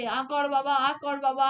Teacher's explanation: আ উচ্চারণ করলে বা আ করলে আমাদের মুখ সব থেকে বেশি খোলে। মোদ্দা কথা, যে স্বরধ্বনি উচ্চারণের সময় আমাদের মুখের দ্বার পুরোপুরি পুরোপুরি, এই শব্দটার উপরে আমি জোর দিতে চাই, পুরোপুরি প্রসারিত হয়, সেসব স্বরধ্বনিগুলিকে বিবৃত স্বরধ্বনি বলে।